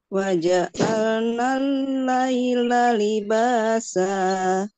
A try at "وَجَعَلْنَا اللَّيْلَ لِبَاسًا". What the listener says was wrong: Ah, masih turun, Bu, masih turun. Waja'alnal laila libasa. Ah, diangkat terus iramanya coba. Waja'alnal.